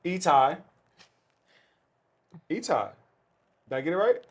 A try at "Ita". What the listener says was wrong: Ita. But you can say Ita. There's no I at the end.